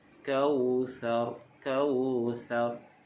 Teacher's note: Baik, bila kita waqaf, Kautsar, huruf sa pastikan bunyi dia lembut. Jangan bunyi macam sin. Sa tu ujung lidah kita keluarkan sedikit. Kautsar, Kautsar.